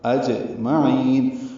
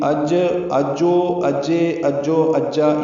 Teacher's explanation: صرف قلقلہ کرنا ہے، جیم ہلا کر ادا کرنا ہے، زبر زیر پیش حرکت نہیں بنانی